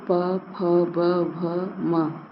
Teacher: इसको जब हम बोलते हैं तो हमारे हमारे ओठ एक दूसरे को स्पर्श करते हैं इसलिए इन वर्णों का उच्चारण स्थान क्या है ओष है य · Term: ओष्ठ